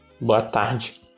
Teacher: So the D is a full-on J in this accent.